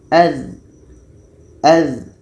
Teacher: Dha ini letaknya pada ujung lidah menempel dengan ujung gigi seri atas. Ujung lidah menempel dengan ujung gigi seri atas. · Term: rokhawah